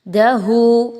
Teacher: ہو پر مد آپ کو مل رہی ہے، آپ نے اس کو کھینچ کے لمبا کر کے پڑھنا ہے، کم مقدار نہیں رکھنی۔